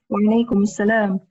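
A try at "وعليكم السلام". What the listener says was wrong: Wa alaikumus salam. You need to say mus again.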